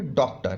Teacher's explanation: ना पूरा अ का उच्चारण होगा ना आ का उच्चारण होगा, ओ का उच्चारण होगा